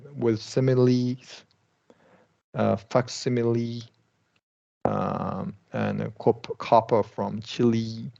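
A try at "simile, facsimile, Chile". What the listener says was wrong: Good. Okay, outstanding. So great in terms of pronunciation, very, very good.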